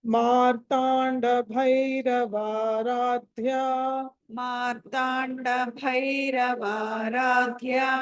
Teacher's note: ఇక్కడ ఆ దీంట్లో భ మహాప్రాణము తర్వాత ధ మహాప్రాణము సో రెండు మహాప్రాణాలు